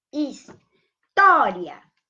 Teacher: o I e o A é crescente, ou seja, o I vem primeiro, que é a semivogal, do que a vogal. Crescente. A semivogal vem primeiro que a vogal. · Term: ditongo crescente